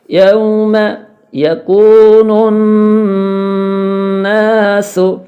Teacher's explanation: سین سیٹی کی آواز آئے